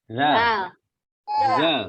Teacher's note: zal itu terletak di ujung dasar lidah dan di ujung gigi depan bagian atas